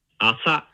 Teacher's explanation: It starts low, and then it goes high for the accent on the second mora. Asa. Asa.